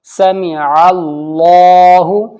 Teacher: عین کے اوپر زبر ہے، اللہ کے لام سے پہلے والا حرف عین ہے تو یہاں پر اللہ کا لام موٹا پڑھا جائے گا